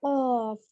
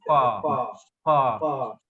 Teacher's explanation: कॉफ को भी हम हलक से निकालेंगे। कॉफ हैवी वर्ड है, हैवी।